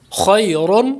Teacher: خیر، کیونکہ را کے اوپر دو پیش زبر ہے، یعنی دو پیش ہیں، را کے اوپر دو پیش ہیں، اس لیے را پر ہوگا. را پر دو زبر ہو دو پیش ہوں تو دونوں صورتوں میں را کو پر پڑھا جاتا ہے.